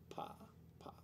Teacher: the P in Polish is not aspirated as much as in most English words.